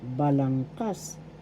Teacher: First syllable ba. Second syllable lang. Third syllable kas. Balangkas. The third syllable has the accent